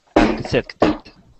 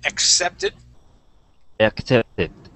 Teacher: Let's practice the word accepted. Okay, so we want to have a C sound before that S sound.